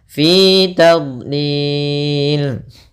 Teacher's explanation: Fi 2 harakat, dia mad tabi'i.